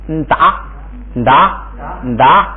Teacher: 就是前头要加个要加个鼻音 。达，哎，就是前头加个鼻音，达，哎，这个意思。咱们读一下后边那俩字啊，你看这就成了哆，哎，它那个声母就发的，